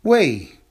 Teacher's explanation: Wei is a second tone character, meaning it's a rising tone. So it's falling tone, rising tone.